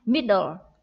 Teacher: Middle, trọng âm ở âm tiết đầu tiên, middle